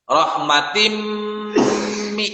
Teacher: Rahmatim mi, ada tamar butoh kasroh tain ya harakatnya, dia ketemu dengan huruf mim maka itu disebut dengan idgham bi gunnah. Maka ketika baca rahmatim mi itu agak ditahan ya sebanyak 3 sampai 4 harakat.